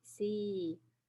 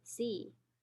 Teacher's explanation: the second one is longer than the first one but you know it's the same word